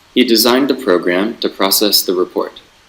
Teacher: the clause terminal falls on the second syllable of the word process.